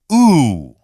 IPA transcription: u